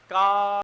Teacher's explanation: अ क ख ग घ सब केवल कंठ से उच्चारण हो रहे हैं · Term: कंठ स्थान